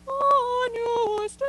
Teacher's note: Instead, see if you can really, the E sound can almost be filtered through almost an O with your lips